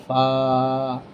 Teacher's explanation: উপরের তাত নিচের ঠোটের পেটের সাথে লাগবে